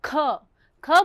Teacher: જ્યારે આપણે ખ બોલીએ છીએ ત્યારે ધ્વનિરૂપ હવા ફોર્સથી બહાર આવે છે માટે તેને મહાપ્રાણ કહેવામાં આવે છે